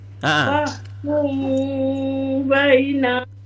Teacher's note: Jadi ketika ada mim mati bertemu dengan ba, maka kita sembunyikan mim. Macam mana menyembunyikannya? Bibir tidak rapat.